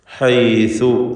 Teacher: വഹ്റു തൊറഫിൽ ലിസാൻ എന്നാ പറയുക. നാവിൻ്റെ അറ്റത്തിൻ്റെ മുകൾ ഭാഗം, മേലെ മുൻപല്ലിൻ്റെ അറ്റവും ചേർത്താണ് സാ ഉച്ചരിക്കുക.